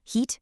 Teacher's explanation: When you say a high front vowel, like in the word heat, your tongue is high up and pushed to the very front of your mouth.